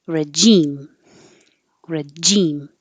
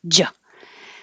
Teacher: Or you can make a j, regime, regime. So the J stops the airflow completely by the tongue going to the top of the mouth and coming down.